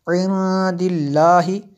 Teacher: نون ساکن کے بعد دال ہے حروف اخفا میں سے، تو یہاں پہ جو ہے اخفا ہوگا جی